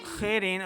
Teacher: خا حروف مستعلیہ سے موٹے حروف میں سے ہے، خا کو موٹی آواز کے ساتھ پڑھیں گے